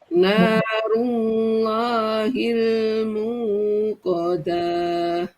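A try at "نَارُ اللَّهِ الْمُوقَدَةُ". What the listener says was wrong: Dahnya pendek.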